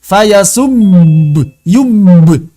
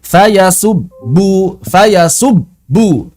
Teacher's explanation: tidak boleh mengalir karena dia bukan rakhwah juga bukan bainiah